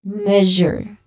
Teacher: It's a buzzing sound. It's a voiced sound.